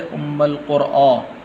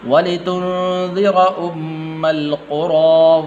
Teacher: قرآ نہیں ہے، را کے بعد حمزہ نہیں ہے